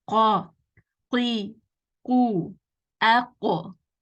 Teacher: So here the root of the tongue touches the soft part. · We are saying the letter qaf, which is heavy. So you want the back of the tongue raised.